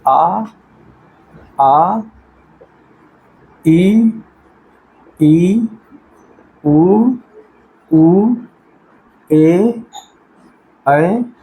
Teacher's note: हवा मतलब क्या कह रहा, प्राण का अर्थ है हवा स्वरों के उच्चारण में वायु प्राण कम निकलती है, अतः सभी स्वर क्या होते हैं, अल्प प्राण